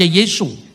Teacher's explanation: Orang Tionghoa tidak bisa ngomong huruf S di akhir nama-nama Yunani. Maka Yesus dibaca Yesu.